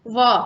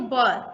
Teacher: वह में हमारा होठ दोनों सट नहीं रहा है और ब में दोनों होठ सट रहे हैं